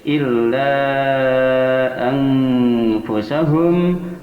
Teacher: Maka di sini panjangnya 2 sampai 5 harakat sebagai mad jaiz munfasil